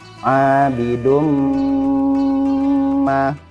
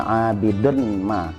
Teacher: Abidum ma, bukan abidun ma, tetapi tanwinnya dimasukkan ke huruf mim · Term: idgham